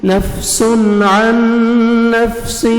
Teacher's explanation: ادغام کریں گے غنہ کے ساتھ عین کو نون مشدد کے ساتھ ملائیں گے اور نوز میں ساؤنڈ لے کے جائیں گے